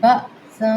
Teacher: حمزہ آ گئی ہے تو یہاں پہ تھوڑا سا نمایاں پڑھا جائے گا، یعنی تھوڑا سا جھٹکے کے ساتھ پڑھا جائے گا